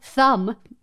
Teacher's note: The sound is made when we place the tip of our tongue between our upper and lower teeth, while the air gets pushed past the teeth and lips. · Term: TH Digraph